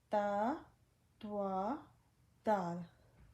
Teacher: The tip of the tongue touching the root of the two upper central teeth is makharij of Ta, Twa, Dal.